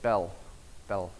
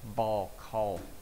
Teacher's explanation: the back of the tongue is raised more for saying the L the dark L